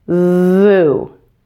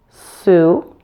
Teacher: Now the voice needs to be turned on at the start of the S sound. An error I sometimes hear is turning on the voice too late. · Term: Z sound